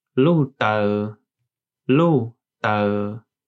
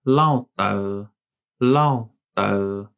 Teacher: word for heel, lu and lao, both are a falling tone